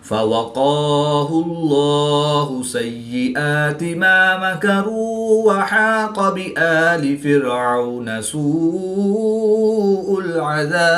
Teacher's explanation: قاف حروف مستعلیہ میں سے ہے تو اس کو پورا یعنی موٹا پڑھیں گے اور کاف کو باریک پڑھیں گے